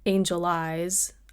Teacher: as opposed to saying angel eyes I think at least in certain parts of the states we tend to lean a little bit more toward a schwa sound